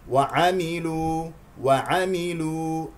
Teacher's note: لام مضمومه مع ضم الشفتين